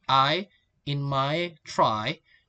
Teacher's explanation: two vowel sounds that glide together in one syllable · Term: Def thongs